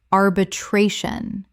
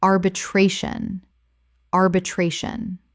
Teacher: Five syllables with the stress on the third.